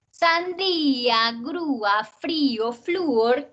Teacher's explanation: todas esas tienen la fuerza en la vocal cerrada. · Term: Hiatos